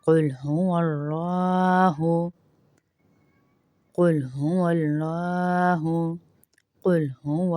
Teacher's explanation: اللہ کے لام کو موٹا کریں گے کیونکہ واو کے اوپر زبر ہے۔ اللہ کے لام سے پہلے زبر یہاں پیش آ جائے تو اس لام کو موٹا کرتے ہیں، باریک نہیں پڑھتے اللہ کے لام کو۔